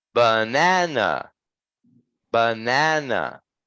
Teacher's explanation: the second syllable is stressed we need to put some um some force on it · one and syllable three they're like quick and they're short um the second one in the middle is longer and higher · the first and the third syllables are reduced and sound like ah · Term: unstressed syllables